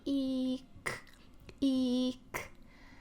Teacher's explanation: So they go E, and then all they have to do is just put their tongue down and let that burst of air come out from the back of their throat